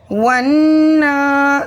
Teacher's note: واو نون زبر ون، نون کھڑا زبر نا، ونّا۔ نون مشدد میں ایک الف کے برابر غنہ ہوگا، پھر ہم اوپر کھڑا زبر ہے اس لیے ایک الف کے برابر اسے کھینچیں گے بھی